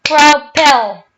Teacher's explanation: there is second syllable which has stress on it, so it's doubled up.